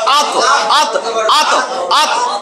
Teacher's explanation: জিহ্বার আগা তার বরাবর উপরের সামনের দুই দাঁতের গোড়ার সঙ্গে লাগাইয়া ত দাল তা